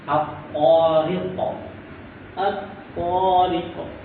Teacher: kalau diwakafkan ada qalqalah